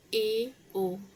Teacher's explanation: अर्धसमित में होता है कि आधा मुंह खुलता है